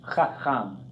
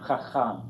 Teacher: So the tendency is probably going to make one like a hey, like chacham or chacham, but you got to make them both as that guttural sound, and both with the vowel ah sound